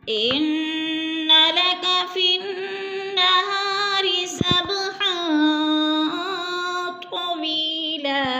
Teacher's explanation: इन्ना की नून मुशद्दद है, गुन्ना करेंगे, नाक में आवाज़ से ले जाएंगे